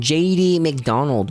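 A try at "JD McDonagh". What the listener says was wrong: It's not McDonald. There's no L. There's no L or D. Think Madonna, but Mac.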